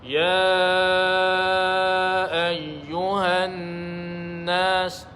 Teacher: Ya ayyuhan nas, dengungkan pada nun yang bersabdu. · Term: wajibul gunnah